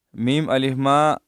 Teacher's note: میم الف ما میں چھوٹی مد ہے، 2 الف کی مقدار، اس کو ہم کھینچیں گے۔